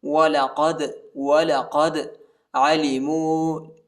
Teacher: دال کو جھٹکے کے ساتھ پڑھیں گے، دال حروف قلقلہ کا حرف ہے